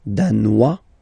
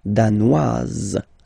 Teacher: Z, okay, insist on that. Danois, don't pronounce the final S. Danoise, here you pronounce it.